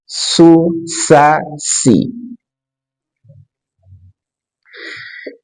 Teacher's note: Kemudian sin, ujung lidah diletakkan pada dinding bagian dalam gigi seri bawah.